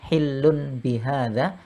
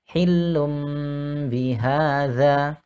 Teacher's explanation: tapi tanwinnya berubah menjadi huruf ba disertai dengan dengung